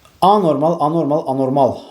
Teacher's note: Anormal sözündə vuruğu sona düşür.